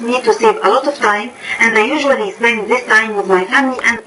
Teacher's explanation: She's putting together 4 or 5 stress words. Then she has a pause, another 4 or 5 stress words. So her pausing pacing's pretty good. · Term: pausing and phrasing